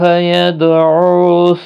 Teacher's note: دال ساکن پر قلقلہ ہوگا